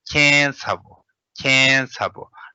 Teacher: We never pronounce, when we speak, we don't say ketsabu. We pronounce as like nasalized, kensabu, kensabu.